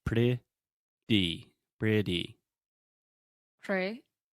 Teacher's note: imagine the T sound as a D because it's a lot more similar to a D when we speak fast. Pretty.